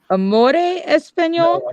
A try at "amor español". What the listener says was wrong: No, amor español. Amore is Italian. Amor.